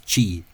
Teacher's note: What you tend to find with slender TR at the start of words nowadays in Kerry is that a lot of the usual pronunciation is chi.